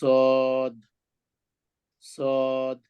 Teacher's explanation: জিহ্বার মাথা নিচের দাঁতের পেটের সাথে লাগাইয়া হেভি করে বলতে হবে